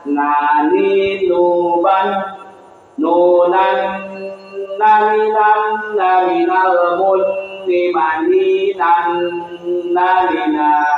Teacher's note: nun di antara kepala lidah dan gusi gigi seri atas